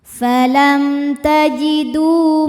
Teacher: ada wawu sukun didahului baris dhammah, maka huruf dal panjang dua harakat. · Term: mad thabi'i